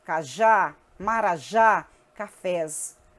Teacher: A oxítona, a sílaba tônica é a última. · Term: oxítonas